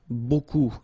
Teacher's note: Remember, you don't pronounce the final P, okay? And then you get this combination of vowels, E, A, U, and you get the sound O.